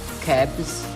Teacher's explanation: In the word cabs, the preceding sound b is a voice sound. So the following sound should be a voice sound too, which is z.